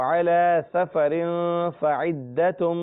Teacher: یہاں پر بھی غنہ ہے، سفر 2 زیر ہے، تنوین ہے اور اس کے بعد فا ہے، لہذا یہاں بھی غنہ ہوگا